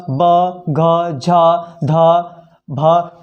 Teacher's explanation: जिन व्यंजनों के उच्चारण में स्वर तंत्रियों में कंपन होता है उसे हम घोष या सघोष व्यंजन कहते हैं।